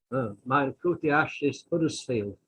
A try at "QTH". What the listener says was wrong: But you said QTH, like in French. QTH.